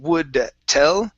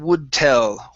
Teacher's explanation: so let's connect the d and the t